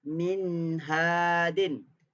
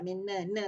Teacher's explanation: Saya masih lagi mendengungkan setengah harakat pada huruf nun. Kalau nun tu sifatnya dengung. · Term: izhar